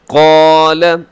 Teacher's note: الف بھی موٹی اور قوف بھی موٹا پڑا جائے گا۔